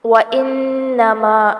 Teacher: نون مشدد ہے، غنہ کریں گے اور آگے بڑی مد ہو رہی ہے۔ انا کو لمبا نہیں کرنا۔